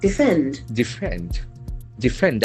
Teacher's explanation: Accent falls on the second syllable.